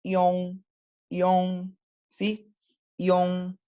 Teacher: Nunca, como John, no es una Y, no es una doble L, no, es una ion, primero la I y después es el on, o sea, son dos sonidos separados · Y después la que saben que es como con la lengua bastante, con los labios bastante redondeados, ¿verdad? Y nasal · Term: final ion